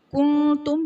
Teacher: کنتم میں نون ساکن کے بعد حروف اخفاء میں سے تا آ رہا ہے، یہاں بھی اخفاء کا قاعدہ ہوگا، یعنی نون ساکن میں ہم غنہ کر کے پڑھیں گے۔